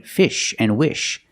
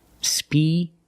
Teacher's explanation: in America we say species using the sh sound